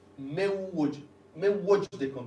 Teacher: Now this does say there's no tashdid, but I disagree with this. The way it's pronounced, you would clearly hear a tashdid, so it does have a tashdid. · Idgham with Ghunna is very straightforward. As you pronounce that Wav, you would hear that sort of nasally sound in the nasal cavity. Important bit is drop the Noon, don't pronounce the Noon, and you join the Mim to the Wav.